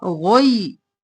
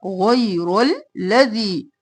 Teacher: قولا غیر الذی، غین موٹا، غی، رو موٹا